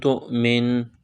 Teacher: تا کو حمزہ کے ساتھ ملائیں گے، حمزہ ساکن ہے، جھٹکا دیں گے، تا حمزہ پیش تو، میم نون زیر من، تو من، وقف کریں گے تو سیم پڑھیں گے۔